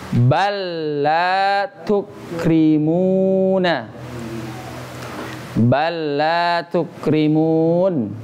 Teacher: Jadi lam yang pertama dihiraukan saja, diabaikan saja, langsung masuk ke huruf yang lam kedua. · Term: idgham mutamasilain